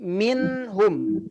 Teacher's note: ketika kita menemukan ada nun mati bertemu dengan huruf H maka bunyi itu jelas tidak memantul di situ tidak juga dengung